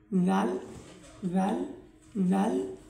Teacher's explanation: জিহ্বার আগা উপরের সামনের দুই দাঁতের গোড়ার প্রান্তে স্পর্শ করে জাল, জাল, জাল উচ্চারিত হয়